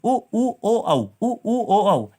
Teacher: ऐसे स्वर जिनके उच्चारण में हमारे होंठ गोल हो जाते हैं वो हमारे होते हैं वृत्तमुखी स्वर